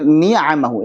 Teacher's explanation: Baik, untuk yang kabir ni'amahu. Ini antara nun dengan ain. Nun di ujung lidah, ain di tenggorokan bagian tengah. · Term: mutaba'idain